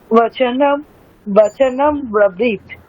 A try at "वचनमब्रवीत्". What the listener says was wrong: দেখুন আমাদের ওটা হচ্ছে না, স্বভাব সিদ্ধ যেটা হয় মকারে গিয়ে আমরা থামছি, আমরা থামবো বকারে গিয়ে, হচ্ছে নম। থামুন, বকারে গিয়ে থামুন, বচনম। বুঝতে পারছেন মানে ভুলটা কোথায় হচ্ছে, আমরা মকারে গিয়ে থেমে যাচ্ছি, আমরা বচনম মানে ব্র যে ব্র ওখানে গিয়ে থামবো, বচনম রবি।